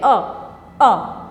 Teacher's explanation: मध्य स्वर अ, यानी कि जीभ के बीच से हमने बोला